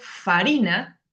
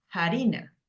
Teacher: en el Castellano medieval empezaron a pronunciar esa F con un sonido aspirado en lugar de farina era harina harina hacer para hacer y